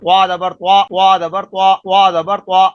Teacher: منہ بھر کے آواز باہر آ رہی ہے، تو اس کی آواز سے پتہ چلے گا کہ آپ تا پڑھ رہے ہیں یا طا پڑھ رہے ہیں۔